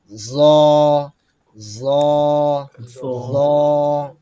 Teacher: জ যখন আমরা উচ্চারণ করব, জিহ্বার আগা সামনের উপরের দাঁতের আঘাতে স্পর্শ হবে। জ জ লম্বা হবে একালিফ পরিমাণ।